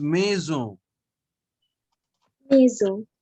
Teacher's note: on gives a nasal sound and n is not pronounced at the end